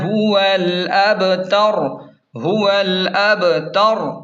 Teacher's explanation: وقف کا طریقہ کار یہ ہے، سورت کے اختتام پر جب ہم الابتر پر وقف کریں گے تو آخری حرف را ساکن ہو جائے گا اور موٹا پڑھا جائے گا